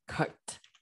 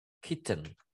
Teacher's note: Làm cho thầy nó bật hơi ra. Nhớ âm K là bật hơi ra.